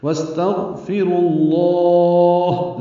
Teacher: وَاسْتَغْفِرُوا اللَّهَ، واو کو سین سے ملانا ہے، استغفروا کا حمزہ عارضی ہے تو اس سین ساکن پہ ہمس ہوگا، غین ساکن پہ اظہار ہوگا، رو واو مدہ ہے لیکن ملانے کی وجہ سے واو نہیں پڑھیں گے، را کو لام اسم جلالہ سے ملا کر پڑھیں گے، پر پڑھیں گے، را بھی پر، لام اسم جلالہ بھی پر۔ وَاسْتَغْفِرُوا اللَّهَ، لمبا کریں گے وقفاً، ہا ساکن کر دیں گے اور اس پہ ہمس ہوگا اور مد عارض سکون بنے گی۔